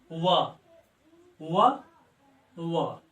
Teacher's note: व पहले जीभ मेरा दांत के पास आ रहा है और उसके बाद ओठ को गोल बना रहा है, व ओठ हरकत कर रहा है, इसलिए व का उच्चारण स्थान दंत और ओष्ठ है। बिना दांत और ओठ के सहयोग के बिना हम व का उच्चारण कर ही नहीं सकते हैं, इसलिए व का उच्चारण स्थान दंत और ओष्ठ है। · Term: दंतोष्ठम